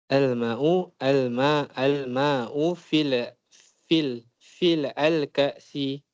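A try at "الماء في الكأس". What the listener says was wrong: Bila kata fil tak ada al lagi dah.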